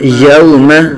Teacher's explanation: واولین کا قاعدہ بغیر کھینچے بغیر جھٹکا دیے